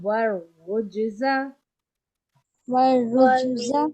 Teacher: جیم پہ قلقلہ بھی ادا کرنا ہے